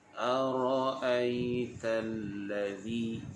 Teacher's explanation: Huruf Hamzah ini makhrajnya adalah di bahagian pangkal kerongkong. Pangkal kerongkong di sebelah sini.